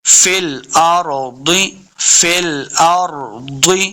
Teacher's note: را کو پر پڑھنا ہے، را ساکن ہے، ضاد حرف مستعلیہ سے، اس کو بھی خوب موٹا کر کے پڑھیں گے